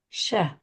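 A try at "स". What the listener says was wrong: sa, sa. Like this, sa. No, not sha. When you say this, there's this sa sound, sa.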